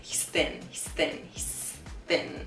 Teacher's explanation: We're not exaggerating the TH sound so much there. It's like the TH sound happens, but the tongue doesn't come out between our teeth.